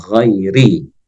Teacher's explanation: ketika ra berharokat kasrah hukumnya adalah tarkik atau tipis.